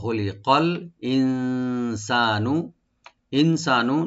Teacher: ওয়া খুলিকা মিলাই পড়লে ওয়া খুলিকাল ইনসানু নুন সাকিন এখানে আমরা ইখফা করব, একটু গুন্না করবো লাইট